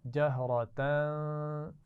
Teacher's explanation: جہرتن میں را کو موٹا پڑھیں گے اور آخر میں تنوین پر غنہ کریں گے